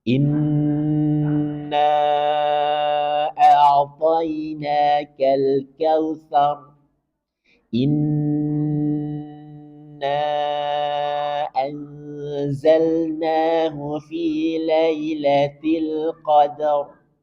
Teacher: Ini gunnah pada mim dan nun bertasydid. Maka ketika kita menjumpai nun atau mim bertasydid, berikan gunnah yang paling sempurna. Artinya lebih panjang daripada gunnah yang lain.